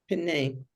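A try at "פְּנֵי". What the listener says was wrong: Pe. It's not pene. It's 2 syllables. Pe, ne.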